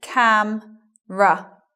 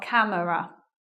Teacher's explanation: elision of schwa following m and r · after the M, elision of schwa. Not saying it, in other words. So it becomes camera, not camera.